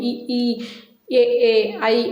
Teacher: இ ஈ ஏ ஐ இந்த அஞ்சு எழுத்துக்களும் அங்காப்புடனே மேல்வாய் பல்லை நாக்கினது நுனி பொருந்த பிறக்கும்